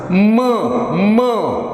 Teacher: closure of two lips, and the air passes through the nose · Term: nasal sound